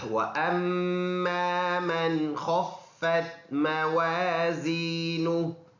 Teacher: وَأَمَّا یہ حمزہ ہے، میم مشدد ہونے کی وجہ سے اس میں غنہ ہوگا، یہ الف پڑھا جائے گا. · من ادھر غنہ نہیں کریں گے کیونکہ نون ساکن کے بعد حروف حلقی یعنی حمزہ عین ہا غین خا میں سے یہ خا آیا ہے